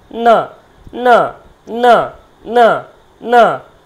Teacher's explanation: না মানে দাঁতে বাড়ি খাচ্ছে এবং সাথে নাকে বাড়ি খাচ্ছে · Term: দন্ত ন